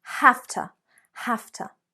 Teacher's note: the verb have has become half half so it's a F sound · you can still hear the T sound, but you'll notice that the V, the V, have, has become haf, haf. So it's a F sound.